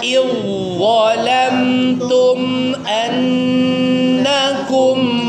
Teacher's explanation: Zalnya melebur sempurna ke huruf dha-nya ya. Idgham kamil.